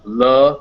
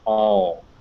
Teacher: that light l and that dark l the love and the all sound